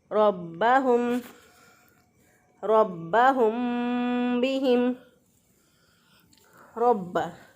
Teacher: रा को मोटा पढ़ेंगे क्योंकि रा के ऊपर ज़बर है। रा के ऊपर ज़बर हो या रा के ऊपर पेश हो, रा को मोटा पढ़ते हैं, और रा के नीचे ज़ेर हो तो रा को बारीक पढ़ते हैं।